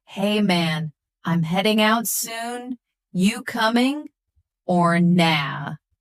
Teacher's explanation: Notice the dropped G in heading and coming and the use of casual phrases.